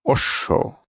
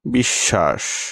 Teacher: শব্দের মধ্যে বা অন্তে ব ফলা যুক্ত ব্যঞ্জন থাকলে ব্যঞ্জনটির উচ্চারণ দ্বিত্ব ঘটে, যেমন অশ্ব, অন্তে বসছে ব ফলা, তাই তালব্য দ্বিত্ব হলো।